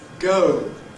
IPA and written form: gəʊ (go)